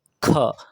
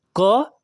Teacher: ख में आप देखेंगे कि ज्यादा हवा निकल रहा है और क का जब उच्चारण करेंगे तो हवा यानी अल्प प्राण यानी कम हवा निकल रहा है